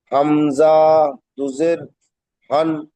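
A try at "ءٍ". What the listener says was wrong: হামজা টান হয়ে যাচ্ছে।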